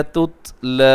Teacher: لام کو کھینچیے گا، کھڑی زبر ہے